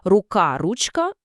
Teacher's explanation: В українській мові звук К перед деякими суфіксами часто переходить у ч, тому корінь тут рук, а в слові ручка, власне, додається суфікс К., але через оце чергування К переходить в ч. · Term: чергуванням приголосних